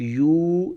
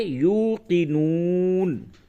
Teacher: دیکھیں یہاں پہ واو کے اوپر حمزہ نہیں، اس لیے یہاں پہ جھٹکا نہیں دیں گے، یہاں پہ کھینچ کر کے پڑھیں گے کیونکہ واو سے قبل پیش ہے اور واو ساکن ہے کیونکہ اس کے اوپر جزم آیا.